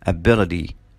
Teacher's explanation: التاء ساوند لو جت between two vowels بنقلبها بنخليها داء ساوند